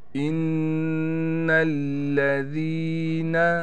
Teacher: نون پر تشدید ہونے کی وجہ سے غنہ کیا جائے گا، اور نون پر تھوڑا ٹھہراؤ بھی کریں گے۔